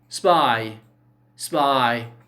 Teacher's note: when I say spy, spy, there is no aspiration.